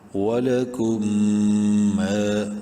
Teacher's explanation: واو زبر وا، لام زبر لا، ولا، کاف میم پیش کم، ولکم. میم ساکن کے بعد میم ہے، میم مشدد ہے، غنہ کریں گے، ایک الف برابر لمبا بھی کریں گے، الف مدہ ہے.